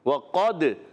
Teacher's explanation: قاف حرف مستعلیہ میں سے موٹا بھی پڑھیں گے, مگر آگے ہے دال حرف قلقلہ میں سے.